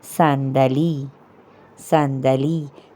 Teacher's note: اگرچہ عربی میں ہم صاد کو الگ مخرج سے ادا کرتے ہیں لیکن فارسی میں بالکل اردو کی طرح ہے. جیسے سین کی طرح ہی اردو میں صاد ادا ہوتا ہے, فارسی میں بھی سین کی طرح ہی ادا کریں گے